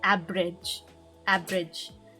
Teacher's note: So the way she said it was the V doesn't sound like a V sound. It makes a B sound. Because in the Filipino alphabet, V doesn't exist.